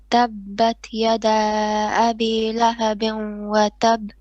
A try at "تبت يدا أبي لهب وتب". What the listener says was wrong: No, now on your yada, make it slightly longer, 4 beats. Yada abi lahabin, 2 beats of ghunna on the idgham, and watab again.